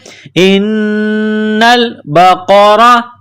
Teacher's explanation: र के ऊपर जबर है तो र को मोटा करना है